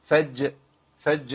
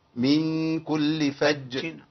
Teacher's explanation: اقف عليها لانها مخففه غير لما تكون مشدده عند الوقف